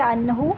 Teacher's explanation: عنہ، یہاں پر اظہار ہو رہا ہے، نون ساکن کے بعد ہا آ رہا ہے حروف حلقی میں سے، تو یہاں پر ہم نون کو نارملی پڑھ لیں گے